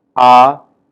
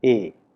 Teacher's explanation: A sound like ah is found to have greater amplitude than a sound like a